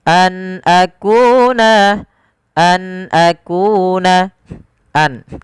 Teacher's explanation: Suara nunnya diperjelas karena dia ada bacaan berupa izhar halqi. Nun ketemu dengan hamzah dijelaskan suara nunnya an akuna, an akuna.